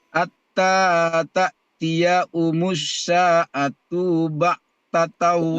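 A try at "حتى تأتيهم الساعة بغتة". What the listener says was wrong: Sa'atu, tunya pendek.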